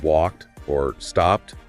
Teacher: So basically, it all comes down to the sound that comes right before the ed. If it's a voiceless sound, like in walked or stopped, the ed sounds like a T.